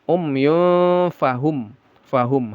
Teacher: Izhar syafawi dibaca jelas mim sukunnya jangan ada gunah. Umyun ya tanwin bertemu fa ikhfa disamarkan lalu didengungkan.